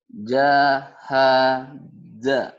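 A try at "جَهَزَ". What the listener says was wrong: jahaza ragu ya. Za ini lidahnya. Nah, za ini sama seperti kau tadi ngucapin sa za. Sa za. Di situ letaknya di situ. Lidah kita mulutnya. Jahaza. Jahaza. Bukan jahaja, bukan jahaja.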